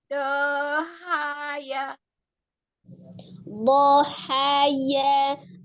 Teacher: Dohaya, tidak dipanjangkan fathahnya, tapi dodnya itu memiliki sifat istiqolah, memanjang makhrajnya. Pangkal lidahnya juga naik.